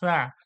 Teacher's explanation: দেখুন এরপরে দেখুন সা, নরম আওয়াজে সা, নরম আওয়াজ, একেবারে নরম আওয়াজ। জিহ্বার আগা এবং সামনে দাঁতের আগা থেকে হালকা হাওয়া বেরিয়ে যাবে সামনের দিকে সা, পাতলা করে।